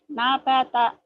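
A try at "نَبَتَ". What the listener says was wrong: Nabata. Tuh hilang B-nya ya. Jangan nabata.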